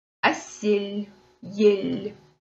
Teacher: если буква «Л» стоит рядом с мягкими гласными, как вот в нашем случае, «Л» будет всегда звучать мягко, как будто стоит мягкий знак